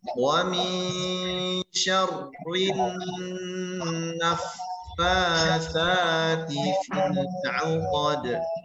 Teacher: Fa bertasydid ya dengan sifat huruf fa yaitu mengalir suara dan nafas.